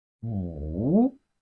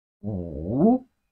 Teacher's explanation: It has the falling rising tone. The falling rising tone is the third tone of Chinese language.